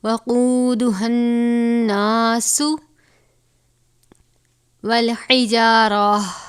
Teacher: ہا موٹے والا ہا ہے، سینے سے خارج ہوگا ، اس نون کے ساتھ ملائیں گے تو نون مشدد ہے،